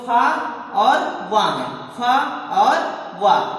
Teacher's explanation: दांत और ओंठ दोनों के प्रयोग से बोले जाने वाले वर्ण को दंतोष्ठ कहते हैं